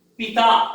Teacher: प के उच्चारण में होठ बंद होता है और त के उच्चारण में दांत से जीभ का स्पर्श होता है। तो यहां पर एक ही सांस में नहीं निकलती है प्राणवायु, तो ये अक्षर नहीं है, ये शब्द है।